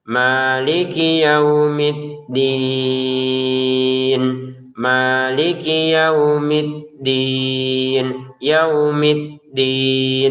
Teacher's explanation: Kinya pendek, jangan maliki yaumi. Ini kinya jangan sampai panjang, pendek saja.